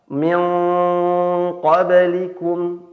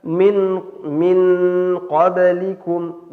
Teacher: Ya, contohnya misalnya kurang tafkhim, ya, pada huruf ikhfa yang isti'la, atau kurang tafkhim pada huruf isti'la. Misalnya pada lafaz nun sukun bertemu dengan huruf qaf, maka dibaca ikhfa-nya, bunyi dengungnya itu dengan tebal.